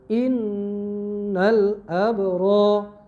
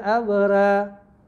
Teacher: Innal abra, tak boleh abra. Ra tu mesti tebal. Tebal dipanggil tafkhim. Semua qura' baca, tak ada baca yang nipis.